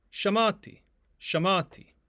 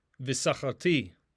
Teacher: when we add the vav to this suffix conjugation form the stress will shift to the ultima that is to say the final syllable